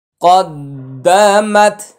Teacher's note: তাসদিদের ভিতরে দুইটি হরফ আছে, এই জন্য উচ্চারণে একটু সময় বেশি লাগবে। একটা হরকতের উচ্চারণ করতে যতক্ষণ লাগে তার চেয়ে একটু বেশি সময় দিবেন।